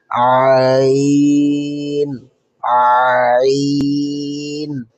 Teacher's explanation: এই হরফটি কণ্ঠনালীর মাঝখান থেকে পড়তে হয়। পড়ার সময় গলার মাঝখানে হালকা চাপ অনুভব হবে। এটি সাধারণত আলিফের মতো সোজা নয়, একটু চেপে আওয়াজ বের করতে হবে।